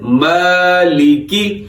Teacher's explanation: میم کے اوپر کھڑا زبر ہے، اس کو ہم نے کھینچنا ہے، اور باقی لام کے نیچے زیر ہے اور کاف کے نیچے بھی زیر ہے، تو ان کو ہم نے لمبا نہیں کرنا۔